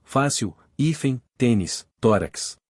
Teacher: as palavras em que a penúltima sílaba é tônica elas são acentuadas nas seguintes situações terminam em l n r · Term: paroxítonas